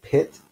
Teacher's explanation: hand in front in front of your mouth and say pit you may notice a little puff of air when you say pit